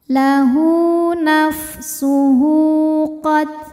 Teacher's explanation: Hu mad silah qasirah. Karena ada hak dhamir, diapit dua huruf hidup, sin dan qaf, dan huruf setelahnya selain hamzah bukan a, bukan i, bukan u. Maka hak dhamirnya panjang dua harokat.